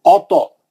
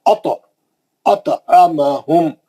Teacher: توئے پہ خلخلہ کریں گے کیونکہ توئے مستعلیہ کا ہے, موٹا پڑیں گے